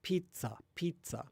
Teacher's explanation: But then in some circumstances, in the middle of a word, it becomes like a stop kind of. It's an affricate